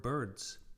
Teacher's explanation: the sound d s easily evolves into a z